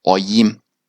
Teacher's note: The first one, which uses the A symbol, it's a low back vowel and it's like the A in father.